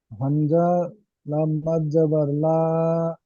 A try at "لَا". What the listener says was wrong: হামজা নয়, লাম আলিফ মাদ জাবার লা।